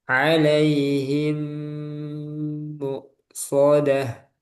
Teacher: Mim bertemu mim diberi gunah.